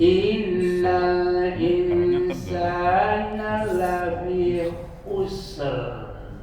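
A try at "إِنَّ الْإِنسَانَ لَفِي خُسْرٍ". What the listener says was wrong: Masih kurang. Roknya dibulatkan ya. Ya.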